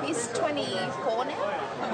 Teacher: it's the Australian questioning intonation so it really is like the rising intonation of a yes no question except that you find it on statements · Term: high-rise terminal